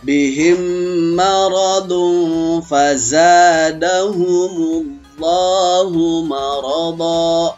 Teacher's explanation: Di saat bertemu mim sukun sama mim yang hidup, dimasukkan, baru disertai dengan suara dengungan yang 2 ketukan atau 3 ketukan. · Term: idgham mimi